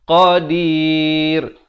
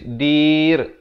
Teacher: Barulah qadir, ra-nya jadi nipis